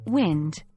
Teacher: W like the W in Wind pronounced by rounding the lips